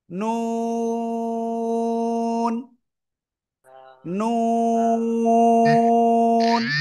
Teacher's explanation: জিহ্বার আগা তার বরাবর উপরে তালুর সাথে লাগাবো, লাগিয়ে দুই ঠোঁট হালকা গোল করে আমরা এই অক্ষরটা উচ্চারণ করব